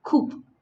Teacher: And in Midland accent, cup is pronounced as coop.